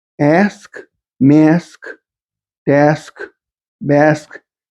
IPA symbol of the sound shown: æ